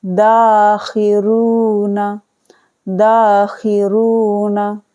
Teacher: خا زیر خی کو بالکل نہیں کھینچنا ہے، نون زبر نا کو نہیں کھینچنا ہے، دال الف زبر دا کو کھینچ کے پڑھنا ہے